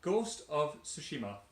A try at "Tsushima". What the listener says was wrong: Tsushima, it's got a T at the beginning. Tsushima.